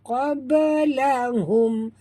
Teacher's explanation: Mim mati bertemu qaf, tak boleh dengung, izhar syafawi.